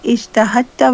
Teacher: the rule of idgham makes it ijtahadta, where the dal completely disappears